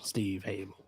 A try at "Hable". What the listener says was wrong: The H is silent.